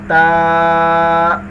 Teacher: اب ہم یہاں سے تا کا مخرج پڑھیں گے، زبان کی نوک اور اوپر کے دانتوں کی جڑ سے ادا ہوتا ہے۔ جب آپ تا کو پڑھیں گے تو آپ کی زبان اوپر والے جو دو دانت ہیں آپ کے، ان کی جو جڑ ہے آپ کی زبان وہاں پر جا کر لگے گی۔